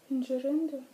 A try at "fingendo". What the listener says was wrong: Slišком длинна. Нету R в основе глагола.